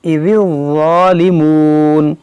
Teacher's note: اذ ذال کو باریک واو کو موٹا پڑھیں گے.